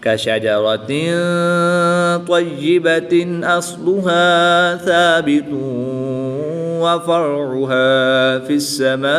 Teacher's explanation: دو پیش کی تنوین کے بعد واو حروف عمل ان میں سے ہے تو یہاں پر ادغام مع الغنہ ہوگا، غنہ کر کے پڑھیں گے.